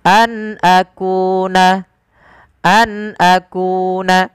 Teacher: an suara nunnya diperjelas karena dia ada bacaan berupa izhar halqi Nun ketemu dengan Hamzah dijelaskan suara nunnya